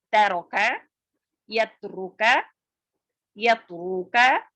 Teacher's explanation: تا کی آواز باریک اور بغیر جھٹکے والی ہوتی ہے